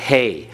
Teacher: The Hey, you have that breath coming out of your mouth as you pronounce it.